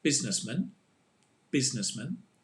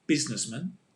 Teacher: it's the same pronunciation because the man is with the schwa sound